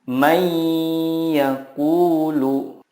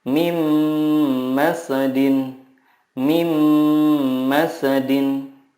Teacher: meleburkan nun sukun ke huruf berikutnya dan disertai gunnah yang dipanjangkan 2-3 harokat. Contohnya, nun sukun bertemu ya, may yaqulu. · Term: idgham